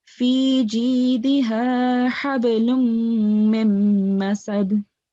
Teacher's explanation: So you have to keep the meme sound in for 2 seconds at least. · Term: idgham